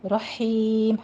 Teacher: ہا وسط حلق سے باریک ادا کریں گے